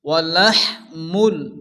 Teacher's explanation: এখানে হচ্ছে বড় হ্যাঁ, মুখ দিয়ে হালকা বাতাস বাইর হবে।